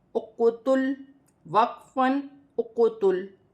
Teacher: وقف کی صورت میں لام ساکن ہے، ایسے ہی پڑھا جائے گا جیسے لکھا ہے، اور جب حروف قلقلہ کلمے کے درمیان میں ہے تو اق پڑھتے وقت قلقلہ پیدا ہوگا